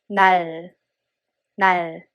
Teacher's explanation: It's not either R or L sound. It's somewhere in between.